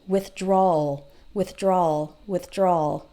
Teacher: you almost don't hear the W